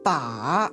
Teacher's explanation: the third falls and then rises